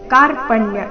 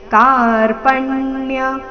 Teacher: ಕ ಚೆನ್ನಾಗಿ ದೀರ್ಘ ಬರಲಿ